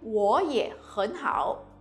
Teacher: we have to change the tone of 我 and 很 to the second tone because they are followed by a third tone syllable